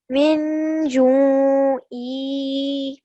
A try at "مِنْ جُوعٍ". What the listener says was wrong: First of all, as I mentioned previously, you have to do ikhfa on this noon as well. So it will be ju. And the reason why it's not ju-e and ju is because when you pause, the last stroke, most of the times, you don't pronounce it.